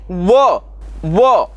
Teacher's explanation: व का उच्चारण करते समय हमें दंत और ओष दोनों का इस्तेमाल करना पड़ता है इसलिए उसको दंत वर्ण कहा जाता है उसके बाद च छ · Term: दंत्योष्ठ वर्ण